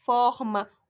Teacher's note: Forma, o for é a sílaba tônica.